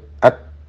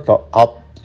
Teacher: Ta itu coba disukun, didahului huruf yang hidup at, pojok lidah melekat, tetapi melekatnya ke gigi. Ini bukan itbaq.